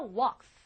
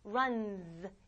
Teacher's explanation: 그 끝나는 소리가 unvoiced, 울리지 않아요. 즉 여러분의 성대를 쓰지 않아요. 즉 이런 소리들이 올 때는 얘도 같이 안 울립니다.